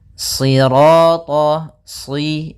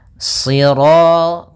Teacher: shad itu pangkal lidah kita terangkat dan melekat karena dia huruf idbaq.